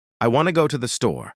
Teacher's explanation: The words want, go, and store are strong. The others are weak. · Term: sentence stress